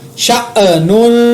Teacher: نون کے اوپر تنوین پر اخفا کیا کیونکہ آگے صاد اخفا کا ہے